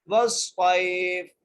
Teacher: صاد کو یا سے ملائیں گے، یہاں پر حرف لین کا قاعدہ لگ رہا ہے، بغیر کھینچے پڑھنا ہے · فا کو ساکن کریں گے وقف کی صورت میں